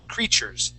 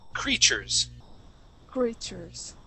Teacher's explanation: the word would be creatures so that t and the U actually create a CH sound